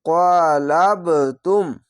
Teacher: কলকলা ধাক্কা মেরে নিচে সাউন্ড আসবে